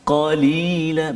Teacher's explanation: Terangkat pangkal lidah ke langit-langit semasa menyebut hurufnya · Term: sifat isti'la